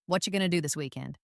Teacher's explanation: Did you hear how what are you going to was compressed into what you going to? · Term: connected speech